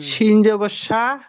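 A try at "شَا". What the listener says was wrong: শিন না থা। শিন না তো, থা থা।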